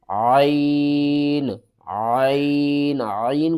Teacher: عین کو آپ نے حلق کے درمیان والے حصے سے ادا کرنا ہے